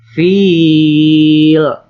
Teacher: Ini disebut dengan mad arid li sukun karena huruf mad jatuh sebelum huruf yang diwakof. Cara membacanya dengan dipanjangkan 2 sampai 6 harokat.